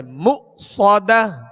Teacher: یہاں حمزہ ساکن ہے، اس کو جھٹکے سے ادا کریں گے مؤصدہ. صاد کو سیٹی کی آواز میں اور پر پڑھیں گے مؤصدہ. انہا علیہم مؤصدہ فی عمد ممددہ.